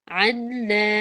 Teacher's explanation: نون پہ کامل غنہ ہو رہا ہے اور باریک ہے، یہ پورا پورا لفظ باریک ہے.